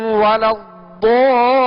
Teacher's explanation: ضاد پر مد لازم ہے جسے دراز کریں گے اور کھینچ کر ادا کریں گے